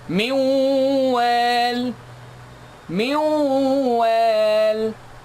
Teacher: I merged noon sakin to be completely skipped for the letter after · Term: idgham with ghunna